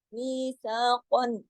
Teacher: قاف کو موٹا پڑھا جائے گا پورا ادا ہوگا